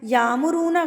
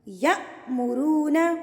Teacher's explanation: اب یہاں پر دیکھیں یہ الف تو نہیں رہا نا، اس کے اوپر حرکت آ گئی تو یہ حمزہ بن گیا. تو حمزہ کے اوپر جب جزم آئے گی تو آپ نے اس کو جھٹکا دینا ہے، نہ کہ اس کو آپ نے الف مدہ بنا کے پڑھنا ہے